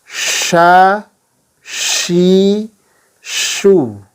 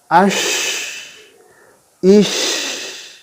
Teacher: Kemudian yang kedua adalah huruf syin, ya, huruf syin atau jika diberi fathah harakat menjadi sya, ya. Titik artikulasi untuk huruf syin adalah bagian tengah lidah hingga langit-langit mulut.